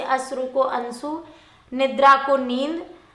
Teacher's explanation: एक प्रवृत्ति अकारण अनुनासिकता की बनी